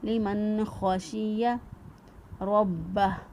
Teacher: را کو پر پڑا اور با کو مضبوط قوت کے ساتھ ادا کیا